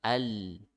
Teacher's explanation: lam makhrajnya samping lidah bagian ujung ya, samping lidah di bagian ujungnya. Tuh ya. Jadi bukan hanya ujung lidahnya saja, tapi sama sampingnya.